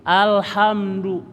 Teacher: Ha-nya suara kecekik, suara pedas. Alham, mimnya repetkan, du-nya monyong. Alhamdu. Ya.